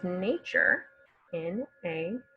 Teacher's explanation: This is another one of those words where we get a kind of ch sound, nature, even though there's not a CH.